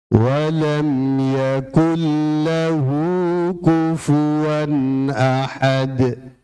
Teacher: tanwin bertemu alif di situ, ya. Itu dibaca idhar, ya, dibaca jelas